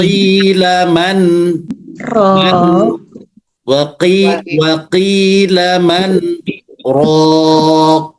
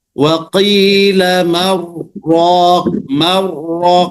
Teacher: karena saktah dia tidak diidghamkan, tapi dibaca izhar, ya.